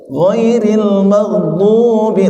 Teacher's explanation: Karena kalau ghairil maghdubi bisa saja dibaca dipantulkan enggak boleh itu. Ya, ghairil maghdubi langsung hilang, tidak boleh dipantulkan.